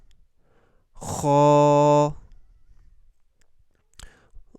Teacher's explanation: On grossit la prononciation pour le kha aussi.